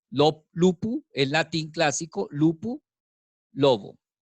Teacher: esta P que está entre dos vocales, termina convirtiéndose en una B, porque es la misma P, pero sonora